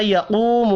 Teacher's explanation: یقوم القاف حروف مستعلیہ ہے، پر پڑھیں گے